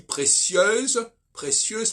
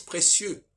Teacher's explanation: le féminin prononce la consonne finale alors que le masculin la prononce pas